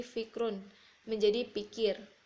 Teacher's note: gugus konsonan diselipi vokal seperti fikrun menjadi pikir